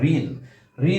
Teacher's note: অর্থাৎ একটি ব্যঞ্জন ধ্বনি একটি স্বরধ্বনি মিলে এই রি উচ্চারণটা হয় রয়ে হ্রস্ব ই। যেমন আমরা ঋণ, ঋণ বানানে আমরা রি লিখলেও এর উচ্চারণটা হবে রয় রসিকের রি, রি রি, রয় রসিকের রি।